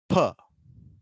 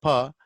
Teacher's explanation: Air is stopped completely through your two lips.